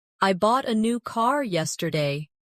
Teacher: I bought a new car yesterday. The stressed words are bought, new, and car. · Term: sentence stress